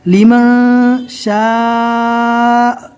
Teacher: मद करके पढ़ना है, कम से कम 3 और ज़्यादा से ज़्यादा 4 अलिफ, बड़ी मद है